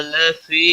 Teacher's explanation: لفی یا مدہ ہے، 1 الف کے برابر کھینچ کر پڑھیں گے